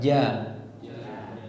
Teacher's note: Kemudian jim juga jangan ada hembusan udara.